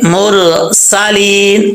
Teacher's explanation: سین میں سیٹی آئے گی